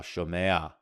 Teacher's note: with that third guttural, it's going to prefer that ah sound. So you get that furtive patach there after the e vowel